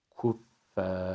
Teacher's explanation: Sonuna kadar dödelip boyu bu incelik, F'deki incelik devam edecek. Uzatma bittiğinde Ra'ya bağlarken kalın bağlayacağız.